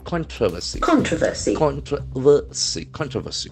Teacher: the accent falls on the first syllable